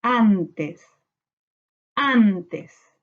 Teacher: En an está la sílaba tónica, por tanto esta palabra es grave